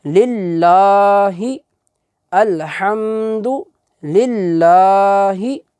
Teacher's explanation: लाम के ऊपर खड़ी ज़बर है, उसे हम थोड़ा सा लंबा करेंगे, ज़्यादा लंबा नहीं करेंगे।